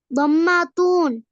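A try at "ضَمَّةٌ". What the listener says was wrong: தம்மத்தூன் அல்ல, தம்மத்துன்.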